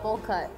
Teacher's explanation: that's very fast you say it's almost like one word